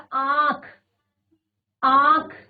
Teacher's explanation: चंद्र बिंदु को यहां पर दिखाया है तो उदाहरण आंख आंख नाक से भी स्वर आ रहा है और मुंह से भी आ रहा है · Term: अनुनासिक